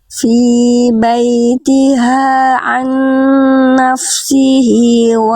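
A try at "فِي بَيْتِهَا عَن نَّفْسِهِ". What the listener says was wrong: Jelaskan dulu fa-nya. Naf baru sin. Nafsihi, jangan nyampur antara af dengan sin. Fi baitiha an nafsihi. Jadi tadi bunyi fa dan sinnya jangan sampai nyampur.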